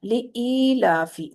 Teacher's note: تو لإیلافی، ली इलाफी नहीं बोलना, ली को जेर है सिंपल, ली इलाफी, ई को लंबा करना है, यानी ये यहाँ पर या मद है